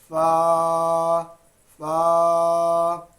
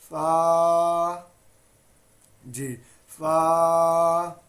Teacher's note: اوپر والے دو دانتوں کو ہونٹوں کے گیلے والے حصے سے جب آپ ملائیں گے ملا کے جب آپ پڑھیں گے تو اس سے ادا ہوگا فا